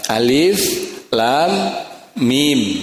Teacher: Jadi harus dibaca alif lam mim, ya, lamnya panjang dan masuk ke dalam huruf mim karena idgham mimmi